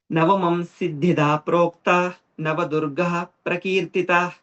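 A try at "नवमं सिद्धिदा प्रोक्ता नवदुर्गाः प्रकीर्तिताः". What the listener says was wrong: Navadurga, don't stop. There is no gap. Navadurga prakirtita. So it's not how you are chanting is Navadurga. You're having a small gap and then you're doing prakirtita. No, Navadurgah prakirtitah.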